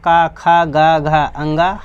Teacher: क, ख, ग, घ, ङ ह और अः इसका उच्चारण स्थान क्या है भाई? कंठ है।